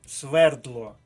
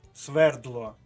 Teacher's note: правильний наголос на першому складі